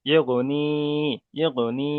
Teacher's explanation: ইয়া মাদ্দাকে সর্বদা একালিপ পরিমাণ টান দিয়ে পড়তে হয়।